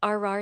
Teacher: Produce a held smooth R R sound, not a growl, not a trill, just a steady resonance with your tongue in that lifted position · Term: American one